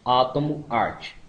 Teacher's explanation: aberta Central oral não arredondado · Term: A agudo